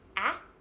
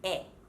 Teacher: so the sound is a lot more open and wide the e sound is flatter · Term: short a sound